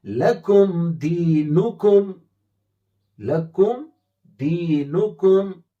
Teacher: لکم دینکم، اب دیکھیں لکم میم ساکن کے بعد دال آیا ہے، میم اور با میں سے کہیں کوئی حرف اس میں نہیں ہے تو اظہار ہے، یعنی ظاہر کر کے میم کو پڑھیں گے، صاف پڑھیں گے۔ لکم لام زبر لا، کاف میم پیش کم، لکم، دال یا زیر دی، نون پیش نو، دی نو، کاف میم پیش کم، دی نو کم، کیا بنا لکم دینکم، لکم دینکم۔ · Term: اظہار شفوی